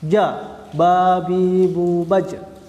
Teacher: Suara yang tertahan, nggak ada suara yang keluar. Karakternya kuat, ya. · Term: syiddah